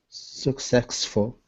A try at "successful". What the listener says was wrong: Be careful because you're putting a k. There's no k. You're saying success, but there's no success. Successful. So start with the first syllable. Suck. Cess. Success. When you speak fast, you're putting the k in a different syllable.